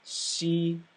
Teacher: we had an elongated hissing sound for shi shi because your tongue was forward in the mouth